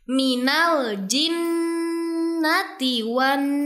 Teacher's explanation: Terdapat dua huruf nun yang bertasydid sehingga dua-duanya harus dibaca gunah dua sampai 3 harakat. Jadi keluarga qurani harus bersabar dulu ya ditahan gunanya.